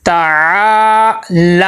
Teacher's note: تو یہاں پہ یہ دھیان رکھنا ہے تا کو ساتھ نہیں لمبا کرنا، تا کے اوپر حرکات غیر مدہ ہے اور عین کے ساتھ الف مدہ ہے، عین کو تو لمبا کریں گے